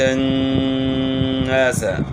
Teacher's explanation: نون مشدد ہے، اس میں غنہ ہوگا